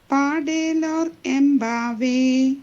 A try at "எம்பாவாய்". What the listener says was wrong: எம்பாவாய் Just on the valla that va இருக்கு இல்லையா, it's all va, it's not ve போட்டா தான் ve. va is va, yeah. Va. va